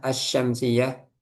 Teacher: lamnya enggak dibaca as langsung melebur ke syin ya